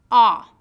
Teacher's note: Your lips are tense, oval-shaped, and slightly protruding, sticking out. Your jaw is open more than for O, and your tongue is low near the floor of your mouth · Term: short O sound